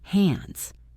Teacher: Listen to the s at the end of hands. It sounds like a zed.